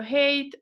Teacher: todas las palabras con h inicial en inglés tienen este sonido aspirado que era el sonido que tenía la h en latín clásico